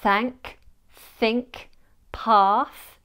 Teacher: Yes, I'm sticking my tongue out. Well, not all the way out, but it's placed between my teeth with just a slither of space for the air to pass through. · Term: voiceless TH